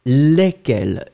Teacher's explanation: No S, you don't pronounce any S between the E and the Q.